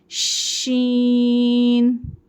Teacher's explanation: शीन को फैलती हुए आवास में पढ़ेंगे